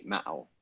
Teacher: the double A makes the A glottal stop, or A glottal stop A